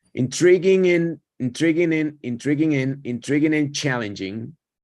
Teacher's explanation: como sigue una consonante, elimino esa D.